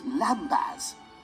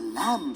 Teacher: over time people stopped pronouncing the baz bit of lambass and we ended up with the lamb sound we know today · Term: silent b